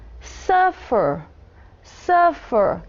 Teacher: Então, a sílaba acentuada não é a última, é a primeira.